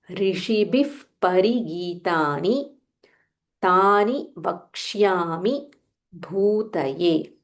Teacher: Bha mahaprana and dhirgha bhu